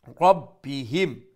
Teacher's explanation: ইয়া মাদ্দা আর হা আলিফ মাদ্দা একালিফ লম্বা ফিহা বিইذনি রব্বিহিম রা ফুল মাউথ বা শাদ্দা ডাবল সাউন্ড এবং এরপরে মিম সাকিন